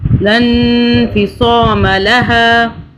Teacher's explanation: یہ صاد ہے، سین نہیں، سین کی آواز میں نہیں پڑھنا